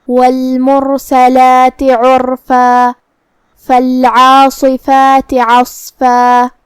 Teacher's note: ہم کلمت عرفہ پہ رکیں گے تو اس پہ مد الف سے رکیں گے، مطلب ہم آخری میں اپنی آواز 2 مد کے برابر لمبی کریں گے